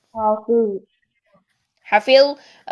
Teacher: ذو کو موٹا کرنے کے لیے پیچھے سے زبان ساری اوپر اٹھا دے، زبان کا درمیان بھی اوپر اٹھا دے. حافظ منہ بھر لیں.